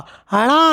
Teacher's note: ణ అనేది మృధన్య స్పర్శ అనునాసిక